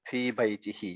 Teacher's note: جب ہا سے پہلے کسرہ آئے تو یہ ہی بنے گا نا، فی بیتی ہی، یہ ہم نے پڑھا ہے نا. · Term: کھڑی زیر